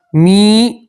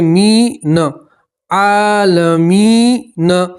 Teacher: یا مدہ میں ایک الف کے برابر کھینچ کر پڑھا جاتا ہے